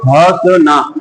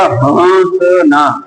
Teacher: मतलब जो हवा निकल रही है वो नाक से और मुंह से दोनों से निकल रही है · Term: अनुनासिक